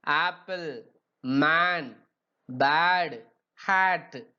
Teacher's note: The vowel a articulated with the front of the tongue is raised in the direction of the hard palate to a height between half open and open position. இத pronounce a பண்ணும்போது half open open positionக்கு வருது.